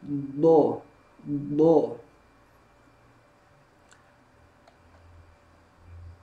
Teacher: Juga dari sisi makhraj, huruf dot, makhrajnya adalah tepi lidah bertemu dengan gigi geraham.